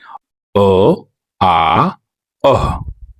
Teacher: जैसे यहाँ पे कंठ का दिया गया है तो आप इसे बोलकर देखिए, आपके कंठ से आवाज आएगी।